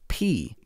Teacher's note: it's that burst of air that happens when you say pee. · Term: plosives